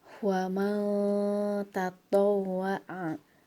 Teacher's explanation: nun mati menghadapi ta, maka seperti yang tadi Ustazah jelaskan, dibacanya harus dengung kemudian ditahan dulu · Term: ikhfa